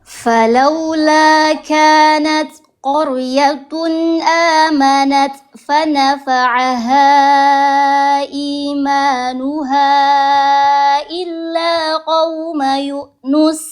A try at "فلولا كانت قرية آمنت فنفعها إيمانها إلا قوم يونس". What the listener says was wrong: Ini kalau nadanya ketinggian dikurangi ya. Takutnya ketinggian nadanya. Ini masih pada tegang ini. Kayak baca biasa aja.